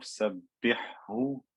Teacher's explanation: there's a light ha, then a heavy ha. I don't merge these together, I keep them separate.